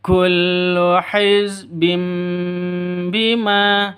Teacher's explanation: Meskipun sifat huruf ba sama dengan mim, keduanya menutup bibir karena keduanya merupakan huruf labial. Kullu hizbim bima, still hum for two beats. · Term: iqlab